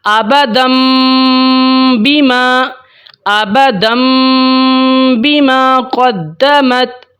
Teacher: اب تنوین کے بعد با آ گئی ہے تو وہاں پر تنوین کی آواز کو ہم نے میم کے ساتھ بدلنا ہے اور غنہ کرنا ہے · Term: اقلاب